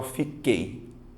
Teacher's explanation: você vai notar que o som do U não aparece